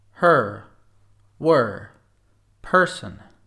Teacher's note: To pronounce this sound, pronounce it similar to the schwa but with an r sound on it.